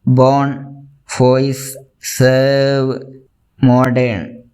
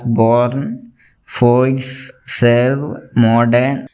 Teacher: In this example, if it is pronounced in received pronunciation or in RP, you will never hear the sound of R, because here R came after the vowel sound. In RP, there isn't any sound of R after a vowel. So they will pronounce those words as born, voice, serve, modern without the pronunciation of R.